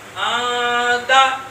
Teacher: ناک کے اندر. نون ساکن کی آواز کو ہم نے ناک کے اندر چھپایا ہے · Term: اخفا